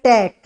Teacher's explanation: इसमें ट मूर्धन्य होता है भाई, दंते नहीं होता।